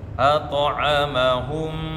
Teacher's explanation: Nah, ketika ada mim sukun bertemu dengan mim, maka idghamkan, idgham mimi ya, idgham mimi. Kemudian ditahan 2 harakat